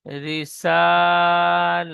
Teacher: ইজরা করবেন, র নিচে জের এসেছে তাই রকে বারিক করে পড়তে হয়।